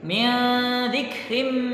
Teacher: ketika nun sukun bertemu dengan da, di sana terdapat hukum ikhfa, yaitu disamarkan bacaannya